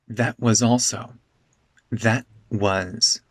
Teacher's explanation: the t in that becomes a glottal stop.